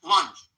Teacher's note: This word has the vowel sound, lunch, and it ends with the unvoiced ch